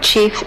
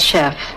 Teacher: French underwent a sound shift in the meantime, from the ch sound to the sh sound in that environment